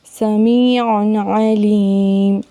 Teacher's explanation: اسی طرح ہم یہاں پہ دیکھ سکتے ہیں سمیع علیم، عین بھی حروف ہلکی میں سے ہے، تو تنوین کی آواز کو بالکل ظاہر کر کے پڑھیں گے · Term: اظہار